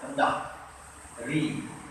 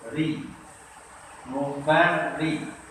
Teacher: ra berbaris kasrah dari bawah. Mesti nipis. Sebut dia ri. Pangkal lidah rendah. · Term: ra mesti nipis